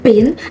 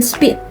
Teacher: the p sound in pin is pronounced with a stronger puff of air than the p sound in spin.